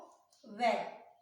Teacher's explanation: दंत से और ओष्ठ, ओठ से व बोला जाता है